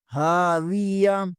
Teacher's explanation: ہا زبر کے آگے الف مدہ ہے، اسے بھی ایک الف کے برابر کھینچیں گے